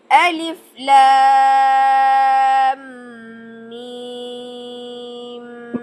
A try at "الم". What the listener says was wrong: نہ نہ نہ، یہ کون سی مد ہے؟ ٹھیک ہے، کتنے کاؤنٹس ہوتی ہے؟ 6 کاؤنٹس، دیکھیں تو آپ نے 6 کاؤنٹ کیا ہے؟ نہیں، کم ہوا۔ اور پھر یہ مد لازم کیا نام ہے اس مد لازم کا؟